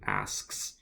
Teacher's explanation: my air is going I'm just interrupting by raising my tongue to do the K at the back. The back goes up to make the K, but I'm still breathing asks.